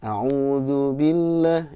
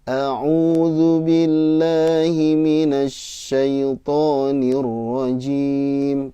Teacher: Jadi nadanya u-nya agak naik.